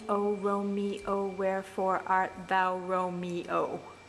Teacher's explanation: it's still a line of blank verse it's got five strong stresses in it but it's actually got 14 syllables